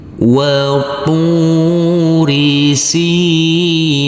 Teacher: karena huruf sin yang berkasroh i bertemu dengan huruf ya sukun harus kita baca panjang dengan panjang 2 harokat. Dan karena kita berhenti di sini, kita wakaf di sini, maka huruf nun, huruf yang terakhir kita baca dengan sukun mati.